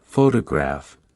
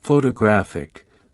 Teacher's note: in the word photograph, the stress is on the first syllable, while in photographic, the stress shifts to the third syllable